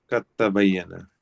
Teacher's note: اب دیکھ اس میں جو ہے نا، یہ پہلا حرف قد تبین کا دال اور تا مخرج ایک ہے، اور جی دال کا یعنی کہ دال کی آواز ہی ختم ہو گئی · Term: ادغام